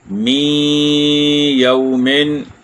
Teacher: یہاں نون ساکن کے بعد یا ہے، اس لیے ادغام مع الغنہ ہوا ہے، تو ایک الف یا 2 حرکات کی مقدار اس پر ہم نے رکنا تھا، اور ہم نے رک کر اس کا ادغام کیا۔